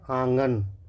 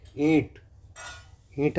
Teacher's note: तो इन सब में क्या होता है कि हवा हमारे मुख के साथ-साथ नाक से भी निकलती है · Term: अनुनासिक स्वर